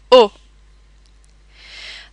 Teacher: Notice that the O sound in French is very rounded and clipped.